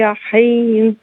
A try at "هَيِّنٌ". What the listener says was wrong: اس کو دو چشمی ہے نا، حین نہیں پڑھیں گے، حین۔